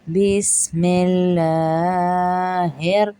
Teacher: بس سین میں سٹی آئے گی